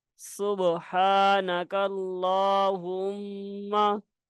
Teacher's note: یہ میم مشدد ہے اس لیے یہاں پہ ہم نے غنہ بھی کرنا ہے